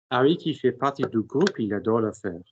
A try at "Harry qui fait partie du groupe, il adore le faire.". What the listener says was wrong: Better, but another step in the same direction. Don't let me hear when one word starts another. Partie, how many words, how many syllables in partie? So there's 2 syllables in partie. I shouldn't know whether pa and ti are 2 syllables any more than I should know whether fait, pa. So fait and pa should be as joined as pa and ti.